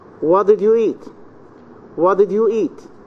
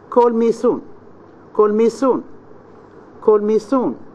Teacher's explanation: the high fall intonation The Voice starts high and Falls to a low pitch